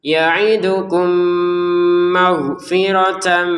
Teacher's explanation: Misalkan kita bacanya ya'idukum maghfirah itu jelas, atau dibaca terputus itu nggak boleh. Kita harus masukkan mim pertama ke mim yang kedua sehingga cara bacanya sudah 1 mim saja, langsung didengungkan. · Maghfiratan bertemu mim juga sama, tanwinnya masukin ke mim dengan dengungan.